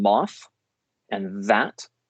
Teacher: moth and that are dental fricatives · dental fricatives because the tongue is in contact with the top teeth.